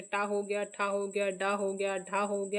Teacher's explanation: मूर्धन्य में जो टा वर्ग है पूरा मूर्धन्य के अंतर्गत आता है।